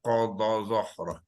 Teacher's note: Pangkal lidah tu kita naikkan untuk menyebut bunyi qaf tu. Sebab qaf huruf isti'la.